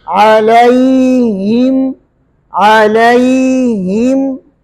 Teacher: अलैहिम, हा को ज़ाहिर करने, अलैहिम अलैहिम इस तरह पढ़ लेते हैं, अलैहिम, तो हा को ज़ाहिर नहीं करते, हा को मोटा नहीं करने, ये ज़ेर है, ज़ेर को भी बारीक करने, हा को भी बारीक करने। हा मोटा हर्फ नहीं है, लेकिन इसको आपने साफ करके पढ़ना है।